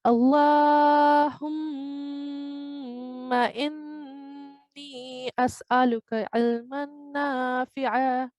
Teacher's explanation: I wanted to point out an important part in this prayer is that we can see vertical fatha over here, which means for 2 seconds we have to prolong. And we can also see mim mushaddad, which is, it's a haruf gunna. So we have to do nasal sound for 2 seconds as well